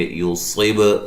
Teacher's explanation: لم میم ساکن کا اظہار ہے، غنہ نہیں کریں گے، یصب، صاد کو موٹا ادا کریں گے، با پہ قلقلہ کریں گے